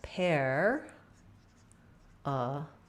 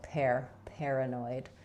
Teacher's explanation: So in paranoid, for most of the US, letters AR are going to be the air diphthong, like airplane or up in the air. First syllable stress, so we stress on pair. This A says schwa, and then we have an oi diphthong, like in void or boy at the end, so oi.